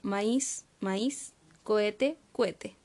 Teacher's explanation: Juntamos dos vocales adyacentes en una sola sílaba, y a veces cambiamos el acento